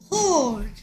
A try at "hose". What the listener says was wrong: 호스. 뭐 이상한 소리야. 얼 소리, 엔 소리가 왜 나오나? 호스. 호스.